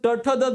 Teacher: जीभ आपण मुरडून आपलं जी काही जीभ आहे तर ते बघा मूर्ध्याला लागतं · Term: मूर्धन्य